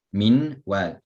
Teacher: You leave out the noon, go straight into the waw. The two letters become one that is mushaddad. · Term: idgham